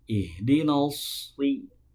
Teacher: ketika membunyikan huruf shad itu harus menebal, ya, terangkat pangkal lidahnya ke langit-langit